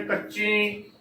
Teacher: ਥੋੜੀ ਜਿਹੀ ਆਵਾਜ਼ ਨੱਕ ਵਿੱਚੋਂ ਦੇਣੀ ਹੈ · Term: ਬਿੰਦੀ